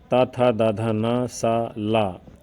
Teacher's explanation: इसका उच्चारण स्थान दंत है